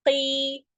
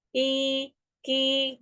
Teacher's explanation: Pangkal lidahnya tetap harus terangkat.